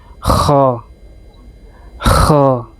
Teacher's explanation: Jadi di tenggorokan bagian atas ya teman-teman. Kh. Bukan ho. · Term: huruf Kh